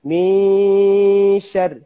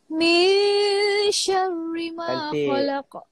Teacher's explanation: Ikhfa tu maksudnya kita kena sembunyikan nun ni di belakang shin. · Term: Ikhfa hakiki